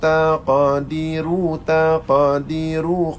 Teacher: ra tebal, tafkhim, dan sifat ra adalah takrir